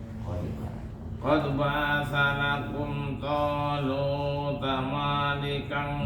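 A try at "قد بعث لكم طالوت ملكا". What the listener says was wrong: Mana enggak panjang.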